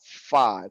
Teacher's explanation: Gigi atas ini bertemu dengan bibir bawah. Fa, keluar huruf fa.